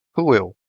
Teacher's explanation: This one, however, ends in a diphthong, so the stressed syllable is the last one. The O is shut and the diphthong sounds eu.